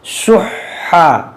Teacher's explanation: دیکھیے یہ حا صحیح سے ادا کیجیے، یہ حا مشدد ہے، اس کو پڑھیں گے 2 بار